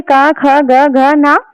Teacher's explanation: उच्चारण स्थान होता है इनका। जो क वर्ग का उच्चारण स्थान है वो होता है कंठ से।